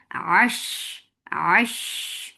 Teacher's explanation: Sheen will get sip of rakhawa, and you are not giving any shape to your lips while you're saying sheen.